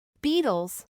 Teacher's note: La E anulará su sonido, y el sonido vocálico chua será colocado entre las dos consonantes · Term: flap T